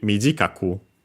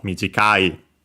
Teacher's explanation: Want to mention that, again, being accented with, when we add a Q, when drop the E, add the Q, the accent moves on the third to last mora, instead of staying on the second to last mora